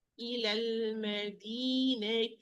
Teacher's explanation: I omit the natural mad at the end of the first word to avoid the meeting of the 2 consecutive consonants.